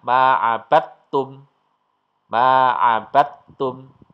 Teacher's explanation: Kemudian yang keempat, di sini ada huruf dal sukun ketemu dengan ta. Ini juga sejenis, makhrajnya sejenis. Maka dal sukunnya hilang. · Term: idgham mutajanisen